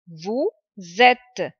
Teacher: it is starting with a vowel, so it is joining the sound of letter S. It is joining with et. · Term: linking